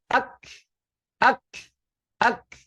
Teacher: ketika kita mengucapkan huruf-huruf itu dengan sukun, akan terdengar bunyi pop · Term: letupan